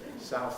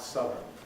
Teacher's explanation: We have a switch from ow to up as we add the suffix, south, southern.